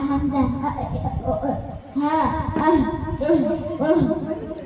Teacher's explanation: தொண்டையின் அடிப்பாகத்தில் இருந்து ஒலிக்கப்பெறுகின்றது.